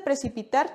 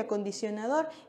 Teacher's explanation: En el caso de precipitar tenemos la sílaba tónica en la última posición, lo mismo que acondicionador.